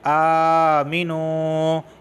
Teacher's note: واو ساکن سے پہلے پیش آیا تو میں اسے کھینچ رہا ہوں